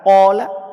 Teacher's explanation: ada alif, sebelumnya ada qaf. Qaf huruf tebal, sehingga alifnya dibaca tebal.